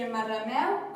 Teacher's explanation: trobem una sinalefa i en marrameu, perquè les dos vocals s'uneixen, i una E oberta en marrameu.